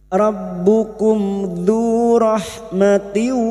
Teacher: Maka selain bertemu dengan 2 huruf ini, seperti ini bertemu dzal, mim sukun dibaca jelas tanpa mendengung idhar syafawi